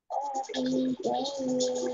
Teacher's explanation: ditandai waunya ada tasdidnya ku dengan huruf lam bacaan Idam bilunah masuk dengan tidak mendengung langsung masuk ke huruf lam tapi tidak mendengung